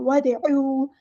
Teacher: दाल साकिन है तो कलकला होगा